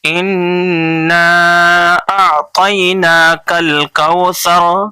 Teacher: واو لین کو نرم آواز کے ساتھ جلدی سے پڑھیں گے